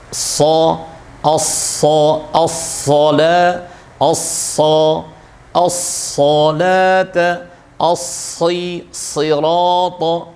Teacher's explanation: Nah, sehingga 4 huruf ini harus lebih besar suaranya disebabkan karena posisi pangkal lidah lebih tinggi dan harus ditinggikan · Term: huruf idbaq